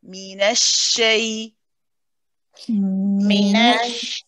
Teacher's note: So you don't just say minashay and go straight to the shay. You hold the sheen first. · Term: rahawa letter